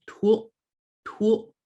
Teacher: you've got the TU and the glottalized L